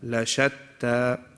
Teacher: Shatta is one word, la is a separate word. La shatta, so you will emphasize on the sheen and not the lam.